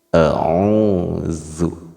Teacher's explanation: Bunyinya alif itu pasti a, ain pasti bunyinya o, dengan ditambahkan waw sukun berarti o-nya 2 harakat, dan zalnya itu penyebutannya digigit ujung lidahnya sehingga bunyi huruf zal tipis. Kalau tidak digigit khawatir kita kepada huruf zai, zu, harusnya digigit zu.